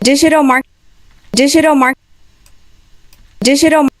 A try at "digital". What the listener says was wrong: So this G in digital, you're doing it as if it was a G from Portuguese, like gente, which is kind of